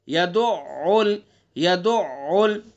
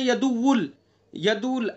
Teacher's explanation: مشدد ہے، تو اس لیے عین کو مشدد پڑھیں گے اور حلق سے ادا کریں گے